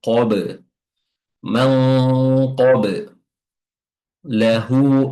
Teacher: Setelahnya ada huruf ba qalqalah ya, ba sukun qalqalah ya. Qalqalahnya itu ee suara yang memantul